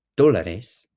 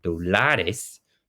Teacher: If you say dólares, you're putting the emphasis on the right spot in the word. That is, the accent goes on the first, the O, right, in the first part of the word. It always goes on a vowel.